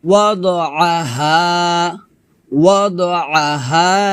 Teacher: হাটা খলকের শুরু থেকে পাতলা করে উচ্চারণ করতে হবে